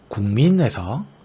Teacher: 국의 받침 기역이 뒤음절이 첫소리인 비음, 미음을 만나 비음인 이응으로 바뀌어 발음되고 있죠. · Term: 비음화